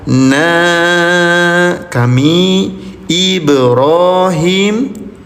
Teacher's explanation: Cara bacanya bunyi nunnya panjangkan selama lima ketukan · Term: mad jaiz munfasil